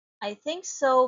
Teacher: It is a rising intonation because it has incomplete thought.